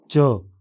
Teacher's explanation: इस ध्वनि के उच्चारण में स्वर यंत्र कंपन नहीं करता। मुलायम तालु ऊपर उठकर नासिक मार्ग को बंद कर देता है। जीभ का अगला भाग ऊपर उठकर कठोर तालु को छूता है